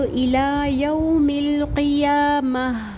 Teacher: اگر رکیں گے وقف جائز پر تو تا کو ہاں میں چینج کر دیں گے اور ہا ساکن کر دیں گے